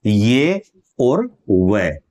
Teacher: इनका जो उच्चारण है वह स्वरों के नजदीक है व्यंजनों से थोड़ा दूर है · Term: अर्ध स्वर